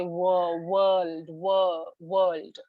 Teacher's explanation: So you are puckering your lips together, so it's definitely bilabial.